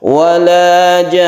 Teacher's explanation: Wala jan, nah jan ini disebut dengan mad lazim mutawal, mutawal artinya dipanjangkan, kita panjangkan jannya ini sampai 3 alif, kemudian kita tasdidkan. Tasdid nun itu kita gunakan meskipun dia itu waqaf.